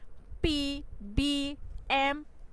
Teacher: বাইলেভিয়াল sounds আর sounds produced by bringing both lips together. তো বাইলেভিয়াল sounds হলো মানে এক ধরনের শব্দ যে শব্দগুলো মূলত দুই ঠোঁট একসাথে এনে, দুই ঠোঁটকে একসাথে এনে উৎপন্ন করা হয় বা উচ্চারিত করা হয়।